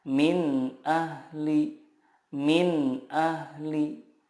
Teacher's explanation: idhar di sini makhrajnya adalah dari tenggorokan. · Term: idhar halki